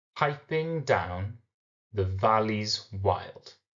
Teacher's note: the valley wild follows the stressed unstressed stressed unstressed meter now the final part of the line is a single stressed syllable